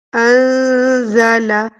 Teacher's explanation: انزل پہ اخفا کریں گی، یعنی نون کی آواز کو چھپائیں گی، کیونکہ نون ساکن کے بعد زا موجود ہے۔